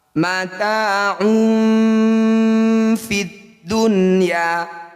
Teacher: Bunyi nun sukun dibaca jelas, tidak usah dengung. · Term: izhar wajib